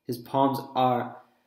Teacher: I noticed is that I hadn't heard the r sound and there actually is a really soft R sound there